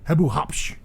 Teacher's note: you have that hard plosive P right in there